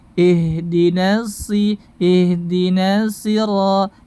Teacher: Kemudian menghilangkan tasydid, tidak ada tasydidnya.